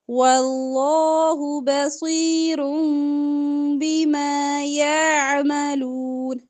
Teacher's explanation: نون کے رن میں جو نون کی آواز آ رہی ہے نا رن، وہ میم سے بدل کے پڑھنی ہے · واللہ کا لام موٹا پڑھیں گے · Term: اقلاب